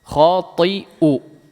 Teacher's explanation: Di sini tidak ada ain, silakan jadikan hamzah.